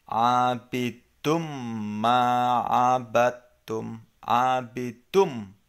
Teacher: Tidak dibaca dun, tetapi nunnya hilang atau tanwinnya itu hilang. Jadi abidum ma'abatum, abidum, langsung ke mimnya. · cara membacanya nun mati atau tanwin itu akan lebur atau hilang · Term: idgham